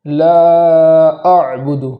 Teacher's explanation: لا پر مد کرنے کے بعد حمزہ کو خوب جھٹکے کے ساتھ پڑھیں گے